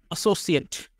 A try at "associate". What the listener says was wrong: প্রথমত আপনি বলুন associate, আপনি দুইটাকে সস উচ্চারণ করছেন, তাই না? associate, তার মানে দুইটাই স ছিল, তাই না? কিন্তু এখানে ব্যাপারটা হলো আপনার প্রথমটা হবে স, ডাবল এস এর জন্য হবে স, আর সি এর জন্য হবে স।